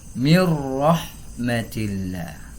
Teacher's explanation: langsung dilebur masuk ke dalam huruf ra dan ditasydidkan tanpa berdengung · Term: idgham